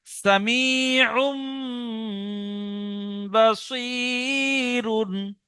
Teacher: তানবিনের পরে বা এসছে, তাই তানবিনকে মিমের দ্বারা পরিবর্তন করে একালি পরিমাণ গণনা করে পড়তে হবে। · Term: ইকলাব